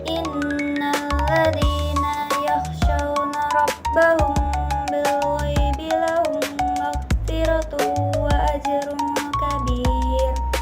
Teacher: Idgham mislen atau idgham mimi yaitu huruf mim sukun yang bertemu huruf mim yang berharokat. Cara bacanya memasukkan huruf mim sukun ke huruf mim yang berharokat sehingga seolah-olah menjadi satu huruf mim bertasydid dan dibaca dengung.